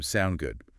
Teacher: the short form sound good again with that upward inflection